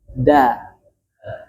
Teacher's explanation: Dal itu dia ujung lidah menyentuh pangkal gigi seri dan dia tipis. Yang belakangnya turun semua, makanya bunyinya da.